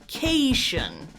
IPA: n